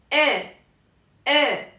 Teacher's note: Al final, en realidad se escucha un poquitito como una U al final. Pero muy leve, casi imperceptible